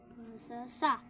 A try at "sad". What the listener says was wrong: Oh, pag may D, sad. Pag may D, ano bigkas? Sad.